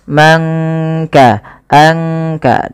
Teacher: Kemudian man kasaba, tidak kita baca man kasaba, tapi disamarkan suara nunnya kepada huruf kaf. Mangka, angka, langsung kepada makhraj daripada huruf kaf itu sendiri. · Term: ikhfa